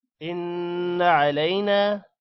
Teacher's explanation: إن علينا نون پر غنہ ہوگا. علینا نون کے بعد الف ہے لمبا بھی کریں گے.